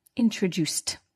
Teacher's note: So introduced, the ed is pronounced as t, not d or id